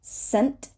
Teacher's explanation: we do not have to say the T at the end